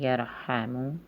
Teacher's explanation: تو پھر یہ دعا پڑھیں گے، یا را زبر یر، را کو پر پڑھیں گے یعنی بولڈ ساؤنڈ لیٹر ہو گیا ہے، را سے پہلے زبر آ گئی ہے، ہا کو حلق کے درمیان سے پڑھ رہے ہیں، یرحمو، اللہ کے لام سے پہلے کاف کے اوپر بھی زبر آ گئی ہے، اس لیے اللہ کا لام بھی موٹا ہو رہا ہے، گرین کلر اس کا ہے، یعنی کہ اس کو ہم بولڈ پڑھیں گے۔